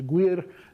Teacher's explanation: it's your tongue not just bunching up toward the back of your mouth but actually colliding with it right uh uh making a closure back there.